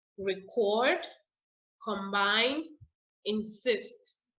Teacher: when it's a verb so record combine insist you see that i'm putting the emphasis i'm putting the stress on the second syllable